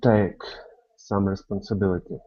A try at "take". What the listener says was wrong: Give me a little bit more E at the end of that. So it's take. That's the sound.